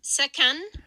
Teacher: That's an aspirated stop in the middle.